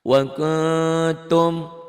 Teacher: Kenapa n-nya kan wakun n, nun mati kan. Bunyi nun matinya n-nya ditambah g jadi eng. Karena ini nun mati ketemu ta ikhfa.